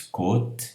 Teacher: o circunflexo que faz fechar o O